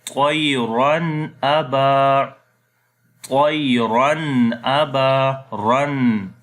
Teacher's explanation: So noon sound is clear, we are not making ghunna. Aba, again alif madda is here. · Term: izhar